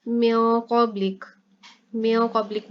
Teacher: म्याँ क़ब्लिक, म्याँ क़ब्लिक में यहाँ पर नून के ऊपर इख्फा हो रहा है क्योंकि आगे हरूफ इख्फा क़ौफ आ रहा है, ठीक है, तो नून के ऊपर गुन्ना यानी इख्फा करके पढ़ेंगे, यानी नून साकिन की आवाज़ जो है इसको छुपा के पढ़ेंगे